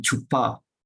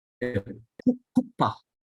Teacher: But it's not chu, it's not chu, it's not a CH sound as in English. It is a strong H like here. Kupa.